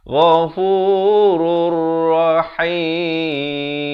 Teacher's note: di sini idgham bila gunnah, daripada ghafurun jadi ghafurur. Ghafurur rahim.